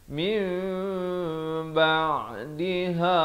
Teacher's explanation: Ditukarkan daripada bunyi nun kepada bunyi mim, kadar panjang 2 harakat. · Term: iqlab